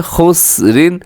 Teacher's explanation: را دو زیر رن، را باریک ہے